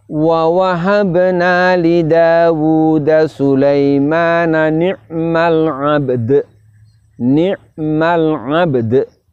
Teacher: Saat kita waqaf bunyinya menjadi 'abd. Huruf ba kita tambahkan pantulannya, kolkolahnya, huruf dalnya juga demikian.